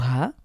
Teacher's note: কণ্ঠ থেকে উচ্চারিত হা এটা বুক থেকে ভেতর থেকে হা